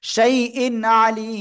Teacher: আমরা স্পষ্ট আকারে পড়বো কোন গুন্না করবো না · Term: ইজহার